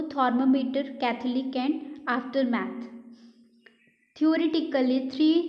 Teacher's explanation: एंड थििस्ट तो this is also अन voice sound why because we डू not feel vibration while pronunciation एंड it is form between teeth tongue between teeth